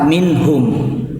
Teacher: Jadi nunnya jelas gitu, terbawa jelas, minhum langsung ke ha yang keluar dari makharijul hurufnya